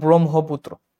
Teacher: ব্রহ্ম এই উচ্চারণটা কিন্তু তোমার ম যোগ হ মিলে হয়। এই যে এই উচ্চারণটা হয় ম যোগ হ মিলে, ঠিক আছে?